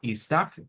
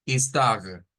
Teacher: esta palabra puede ser como istag, como con la J, istag, que sería más ese sonido, y con la R francesa, istag, que sería más marcado